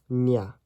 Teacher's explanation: The enya is just a n that glides off with a y.